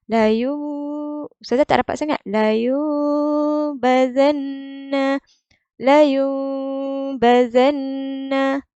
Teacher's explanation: Cara bacaan dia ialah nun sakinah ditukar kepada mim. Diikhfakan mim dengan mengekalkan dengung pada mim. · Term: iklab